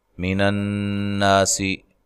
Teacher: نون مشدد پہ غنہ ضروری ہے